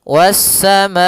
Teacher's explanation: Was-samaa, baru dilepaskan a-nya. Kita panjangkan dulu ma-nya baru bacaan ke a · Kemudian hamzah tersebut pada satu kata sehingga dinamakan muttasil, bersambung. Panjang untuk mad wajib muttasil yaitu 4 harokat atau 5 harokat dalam sebuah riwayat